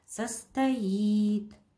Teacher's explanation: Ударение падает на и